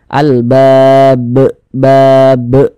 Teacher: karena berhenti tepat di huruf yang tidak dibaca panjang ya maka hurufnya itu kita pantulkan ini kan dia sukun sebab kita sukunkan bukan sukun asli sukun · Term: Qalqalah Kubro